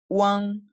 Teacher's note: primero una U corta y ligera, sin mucho énfasis, y luego el énfasis está en la an